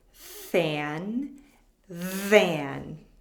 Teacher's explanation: if I don't turn on my voice enough it sounds like I'm saying I want to buy a fan